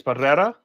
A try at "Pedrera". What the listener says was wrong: Pedrera. gotta roll your tongue, Gotta roll the tongue, buddy.